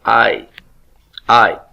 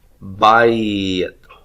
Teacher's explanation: we can have the A and the Y sound coming together to form a diphthong